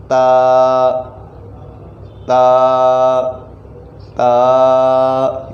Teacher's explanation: ज़बान की नोक और ऊपर के दांतों की जड़ से زبان ہم اوپر لے کر جائیں گے پھر ہی یہ ادا ہوگا، جس طرح کہ لکھا گیا ہے تا تا تا، یہ طریقہ۔